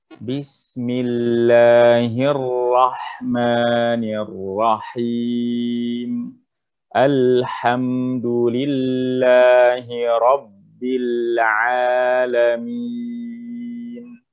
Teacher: lam itu tidak mengeluarkan nafas Kecuali sedikit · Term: jaher